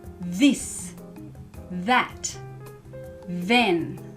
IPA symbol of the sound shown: ð